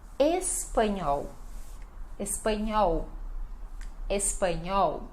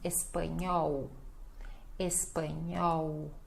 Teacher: Esse nhó, eu sei que para muitas pessoas também é difícil, né? O NH e o L final som de U.